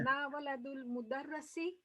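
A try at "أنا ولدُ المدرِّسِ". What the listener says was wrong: Mudar, no, mudar, not darrasi, mudarrisi. Ra has a kasra.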